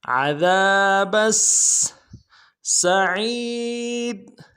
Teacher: اگلی سین کی سیٹی باریک ہوگی